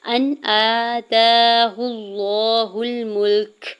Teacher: حمزہ کے زبر کو نون ساکن کے ساتھ ملاتے ہوئے اظہار حلقی ہوگا، یعنی نون ساکن پہ غنہ یا اخفا نہیں کریں گے۔ حمزہ کے اوپر کھڑی زبر ہے اور تا کے اوپر بھی کھڑی زبر ہے، 2 حرکت کے برابر کھینچ کے ادا کریں گے۔ · حمزہ کے اوپر کھڑی زبر ہے اور تا کے اوپر بھی کھڑی زبر ہے، 2 حرکت کے برابر کھینچ کے ادا کریں گے۔ ہا کی پیش کو لام جلالہ کے ساتھ ملاتے ہوئے اللہ کے نام کو پر پڑھیں گے اور 2 حرکت کھینچ کے ادا کریں گے